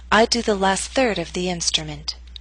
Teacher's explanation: Note that primary stress is in the middle of the statement. Your voice will continue to fall after the word third. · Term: falling ination, falling intonation